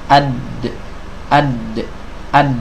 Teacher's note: Pasti Bertemu antara ujung lidah dengan pangkal gigi seri atas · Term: huruf Dal